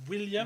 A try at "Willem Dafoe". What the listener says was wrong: Non, dans le fond, ça c'est V. Dans le fond, ça fait Willem. c'est Willem Dafoe.